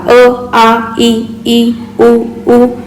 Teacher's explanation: ओठांचा एकमेकांशी किंवा जिभेच्या कोणत्याही भागाचा मुखातील कोणत्याही अवयवाशी संपर्क होत नाही आणि मुखावाटे जे ध्वनी बाहेर पडतात आपण त्यांना काय म्हणतो स्वर